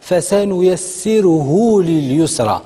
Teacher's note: الهاء حرف الهاء وتابعوا واحد تبعوا واحد المد صغيوره الضمه صغيوره هذا هو مد الصله الصغرى وكن مدوه غير جوج حركات